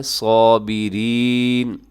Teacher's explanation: اس میں یائے مدہ ہے، صابرین، ایسے اسے اپنے لمبا کرنا ہے